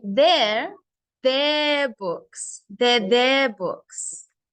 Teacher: we stress the adjective